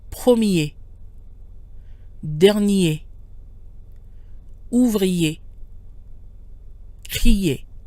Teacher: Another common combination is IER, which is pronounced IE. I with a Y sound and E.